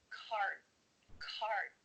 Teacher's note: your mouth is making the shape of that D sound but it's not making the vibrations happening you're not actually making a D sound